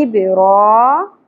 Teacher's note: با ساکن پہ قلقلہ ہوگا را کھڑی زبر ہے ایک الف کے برابر کھینچنا ہے ابرا